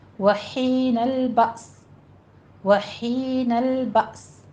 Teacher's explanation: ہا وسط حلق سے باریک سانس کی سی آواز ادا کرنی ہے، اور بأس میں با یہ آپ نے کیا کہ آگے سین بھی ساکن کر دینا ہے۔